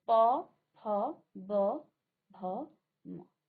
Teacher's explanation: आपके दोनों होठ जो हैं आपके स्वास मात्रा को रोकती हैं